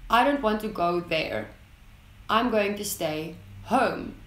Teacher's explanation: the falling tone is used as a form of finalization or giving a statement